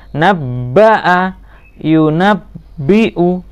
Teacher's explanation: tidak boleh dibaca naba'a, tapi harus ditahan dulu ba-nya